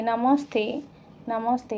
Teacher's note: नमः प्लस ते, नमस्ते, नमस्ते, ठीक है? विसर्ग के बाद, यदि 'ते' है, तो दंत्य स आता है